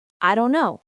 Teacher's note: The T in Don't gets very soft or disappears. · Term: dropping sounds